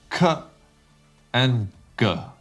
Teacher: we use the back of our tongue to block the air. And these two sounds are k and g.